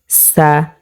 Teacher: প্রিয় দর্শক, এখানে যে সিনটা আমরা দেখতে পাচ্ছি এই সিনটা আমরা চিকন করে পড়ব সা